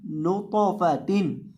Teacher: यहाँ आपने नून को तौ के साथ मिलाना है, तौ को मोटा करके पढ़ना है और इसको हिलाना भी है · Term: कलकला